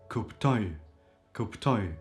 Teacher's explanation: and the oi syllable at the end is stressed